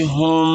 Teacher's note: एक अलिफ के बराबर गुना करना है इसमें, क्योंकि मीम साकिन है